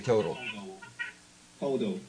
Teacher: it might be easier to say as a D, because Americans will say total.